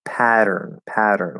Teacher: here we have a weak t at the start of a syllable unstressed syllable right between two vowels that triggers the flap to d in american english even if it's written with a t it doesn't matter okay